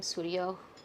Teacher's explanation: the visarga becomes an O before a short a, and then the a goes away